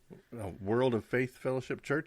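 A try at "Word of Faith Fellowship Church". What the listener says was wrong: It's word, not world.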